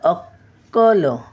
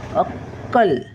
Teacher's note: अक्कल. असा क वर जोर द्यायचा, डबल आहे ना